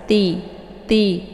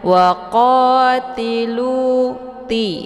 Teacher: cara bacanya ujung lidahnya ditempelkan di ujung gigi seri bagian atas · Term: huruf ta